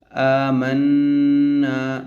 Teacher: ایک الف کی مقدار کھینچ کر پڑھیں گے۔ میم نون زبر من، نون الف زبر نا، آمنا، نون پر یہاں پر بھی غنہ ہوگا۔